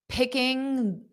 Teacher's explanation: So you might not hear that full G at the end.